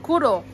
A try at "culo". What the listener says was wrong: Culo. Ella dice la R, pero no la L.